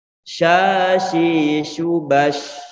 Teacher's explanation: Angin di saat kita mengucap huruf shin ini, angin harus menyebar ke seluruh mulut. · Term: tafasyi